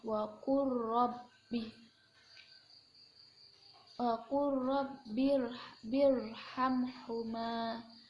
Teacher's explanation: Lam sukun yang bertemu dengan ro berharokat ini dinamakan idgham mutaqaribain. Idgham mutaqaribain, jadi bacanya dimasukkan ke huruf ro.